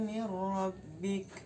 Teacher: huruf ra-nya dibaca takhfim, yakni dibaca tebal karena huruf ra-nya berharokat fathah